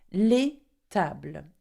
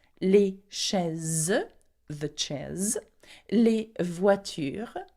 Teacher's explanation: you put an S at the end, though you don't pronounce it as you do in English